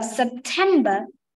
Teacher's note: the stressed one the second syllable